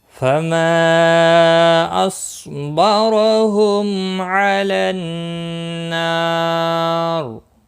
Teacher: فما مد منفصل ہے، 3 الف کے برابر کھینچ کر پڑھیں گے۔ صاد مستعلیہ ہے، پر پڑا جائے گا، رو زبر کی وجہ سے پر ہوگا۔